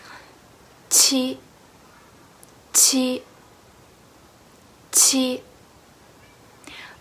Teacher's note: The only difference between ji and the qi is that when you pronounce a qi sound, the airflow is much stronger than ji